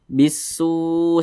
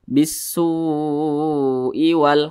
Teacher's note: Nah, maka cara bacanya itu diidghamkan. Jadi lam ini tidak dibaca, langsung ke huruf sin nih. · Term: alif lam syamsiyah